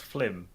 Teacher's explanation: In the Caribbean, film is pronounced flim.